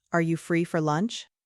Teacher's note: Pay attention to the rising intonation at the end because it's a question.